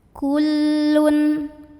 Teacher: tanwin dhammahnya itu dibunyikan dengan jelas, bunyinya an dan tidak perlu ditahan. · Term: izhar halqi